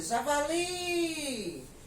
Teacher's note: eu já sei que realmente a minha sílaba tônica é a última